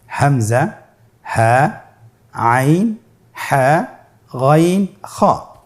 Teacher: এই 6টি হরফে হলকের থেকে উচ্চারিত হয়।